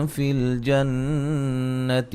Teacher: نون تنوین کا باریک اخفا ہے. فی الجنتی، نون مشدد پہ غنہ ضروری ہے